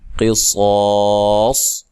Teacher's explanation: قاف کو موٹا ادا کرنا ہے، صاد کو بھی خوب موٹا ادا کرنا ہے